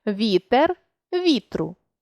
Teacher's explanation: у формі слова вітру звук е випадає